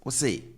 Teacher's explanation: you stretch the ending and raise the tone. So if someone says something and you didn't quite catch that, and you want the person to repeat, you can ask, what say?